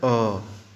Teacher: कंठ से जब हम बोलेंगे तो वो हमारा मुंह पूरा खुला जाता है, तो हो जाता है अ